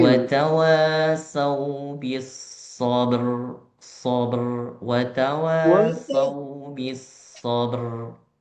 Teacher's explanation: Itu jadi rok yang tipis. Hati-hati karena roknya jadi harus roknya tafkhim, roknya tebal.